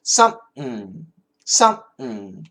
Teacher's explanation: it's like S-U-M, some, but then kind of make a P, but don't finish the P. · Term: glottal stop